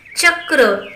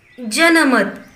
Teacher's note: तालव्य यामध्ये जेव्हा आपण च या शब्दाचा उच्चार करतो तेव्हा चक्र म्हणत असताना आपल्या जिभेचा स्पर्श तालूला होतो